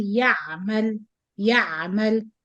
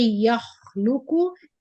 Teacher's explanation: the ain here has running sound but shorter than kha.